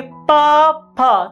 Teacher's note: तो हमारे जो 2 ओष्ठ हैं इसको एक दूसरे को स्पर्श करते हैं। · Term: ओष्ठ वर्ण